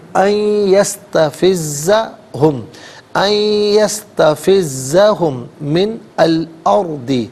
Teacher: ان میں نون ساکن ہے، اسے یستفزہ کی یا کے ساتھ ملائیں گے، یا کی آواز کو غنّے کے ساتھ ادا کریں گے۔ یہاں پر یرملون کا جو قاعدہ ہے وہ اپلائی ہوگا۔